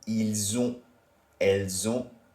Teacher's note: Elles ont, they have feminine. And again, the la liaison must occur here. So it sounds like a bit of a Z.